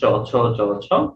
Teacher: করছি আমাদের যে ভাষায় বাতাসটা তালুকে স্পর্শ করি খেয়াল করে দেখেন আপনি যখন উচ্চারণ করছেন চ ছ চ ছ তখন আপনি তালুকে স্পর্শ করছেন আর তালুকে স্পর্শ করছেন বলে এটাকে আমরা বলি তালব্য বর্ণ আমরা